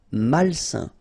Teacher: A-I-N together, it's a nasal and it's un.